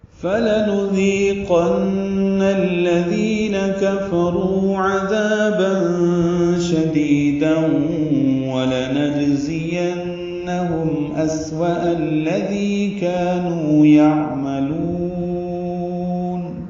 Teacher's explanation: فا لام جلدی سے پڑھیں گے، نون کی پیش کو معروف طریقے سے ادا کریں گے، دال نرمی سے پڑھیں گے، دی یا مدہ ہے، 2 حرکات لمبا کریں گے، قاف پر پڑھیں گے، نون مشدد پہ غنہ ہے۔